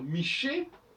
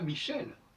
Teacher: le L sans E ne doit pas se prononcer, normalement.